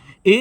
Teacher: अ से मिलकर बनता है ए तो अ का उच्चारण कंठ से इ का उच्चारण तालु से तो ए का उच्चारण कंठ तालु से